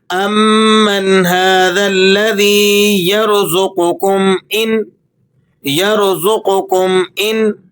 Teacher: قاف کو آپ نے موٹا کر کے پڑھنا ہے اور میم پر آپ نے غنہ نہیں ادا کرنا۔ اس کی وجہ یہ ہے کہ آگے حروف حلقی آ رہا ہے۔